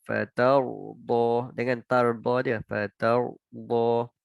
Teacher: Ta ra kan, fatardah. Ra tu bagi tebal sikit.